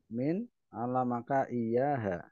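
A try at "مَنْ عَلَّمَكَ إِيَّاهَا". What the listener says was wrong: man bukan min.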